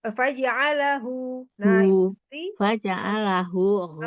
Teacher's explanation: di H itu dari bawah tenggorokan pangkal tenggorokan yang bawah kalau G itu yang atas